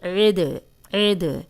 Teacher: دال قلقلہ ہے، اس پہ جزم آ گئی ہے تو ہلا کے پڑھیں گے